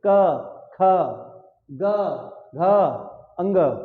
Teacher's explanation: का वर्ग का उच्चारण स्थान क्या हो गया? कंठ हो गया।